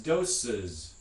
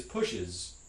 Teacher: a special vowel that gets inserted there in between two sibilant fricatives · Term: schwa vowel